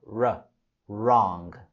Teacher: La letra W es muda en la palabra wrong, wrong. Solo lo pronunciamos desde el sonido r, r, wrong.